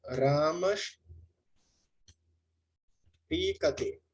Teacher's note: Então, quando eu tenho visarga precedida dessas cerebrais aqui, a minha visarga vai se transformar na sibilante, que corresponde ao mesmo ponto de articulação desse takara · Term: sibilante cerebral